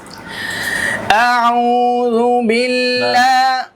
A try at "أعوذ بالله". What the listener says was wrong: টান পেছে গেছে ঘুম উঠা হয়েছে ঘুম উঠা হয়েছে আউযু জোরে হয়